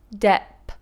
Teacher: You see, my lips explode and my tongue pushes through.